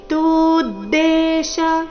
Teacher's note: ತೂ ನಂತರ ದಕ್ಕೆ ದೊದ್ ಒತ್ತು.